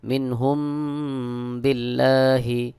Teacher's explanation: মিম সাকিনের পরে বা থাকলে মিম সাকিনের ইকফা হয় এখানেও গুন্নাহ করে পড়তে হবে